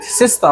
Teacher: sister waa shwa sound waa khafiif okay oo aad u gaaban